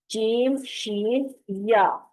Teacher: یہ تینوں حروف زبان کے درمیان کو اوپر تالو سے لگا کر ادا کیا جاتا ہے. درمیان زبان کا درمیان اور تالو کا بھی درمیانہ حصہ.